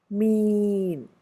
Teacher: and you will notice how it becomes a nasalized sound mean you notice that during that sustained e you definitely can feel the air passing out through the nose · it but more because of the m sound that precedes it the e changes and you will notice how it becomes a nasalized sound mean you notice that during that sustained e you definitely can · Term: nasalization